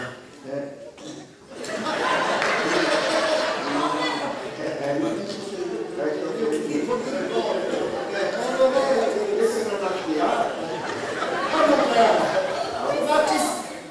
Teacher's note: La raschiata è una specie di suono animalesco che esce dalla nasca. Guarda, è molto sgradevole, quasi cavernosa, che parte dalle profondità degli orifizi nasali, transitando per quelli gutturali, dove trova una sorta di cassa di risonanza e quando Avoca!